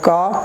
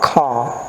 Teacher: the first one is not the aspirate, it is called non-aspirate sound. There is less air. And the second one is aspirate sound. So you have ka, kha.